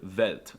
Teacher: For some reason, they pronounce the W's with a V sound